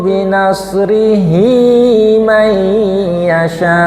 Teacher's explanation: Kalau hua atau hi yang diapit dua huruf hidup seperti ini maka akan menjadi mad silah qosir